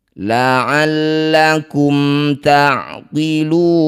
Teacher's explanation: Disebut bacaan namanya izhar syafawi. Cara bacanya baca jelas bunyi mim. Rapatkan bibir tanpa dengung.